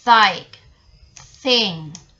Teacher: dental, tongue, tip or blade and upper front teeth